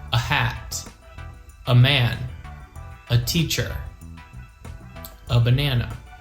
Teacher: the letter a never makes the long or short vowel sound of a it's just the schwa